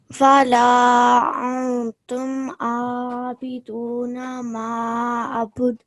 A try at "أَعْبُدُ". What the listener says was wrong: A'bud. Okay, the ayn sound. A'bud. Just remember that nasal sound you have to produce because of the noon sakin, okay?